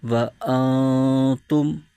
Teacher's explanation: آگے واو زبر و، حمزہ نون زبر ان، و ان، تا میم پیش تم، و انتم۔ یہاں بھی نون ساکن کے بعد حرف تا جو کہ حروف اخفا میں سے ہے، تو یہاں بھی اخفا کا قاعدہ ہو رہا ہے اور یہاں بھی غنہ کر کے پڑھیں گے